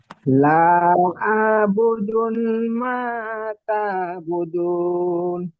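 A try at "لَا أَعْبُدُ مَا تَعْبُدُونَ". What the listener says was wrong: প্রথম বুদুন কেন পড়ছেন? প্রথম বুদু আছে, দাল পেশ দু, নুন নেই প্রথমে।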